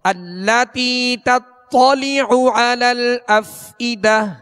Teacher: تا کو باریک پڑھیں گے اور طا کو پر یعنی موٹا پڑھیں گے